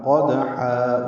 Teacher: قدحا وسط حلق سے ادا کرتے ہوئے 2 حرکات لمبا کریں گے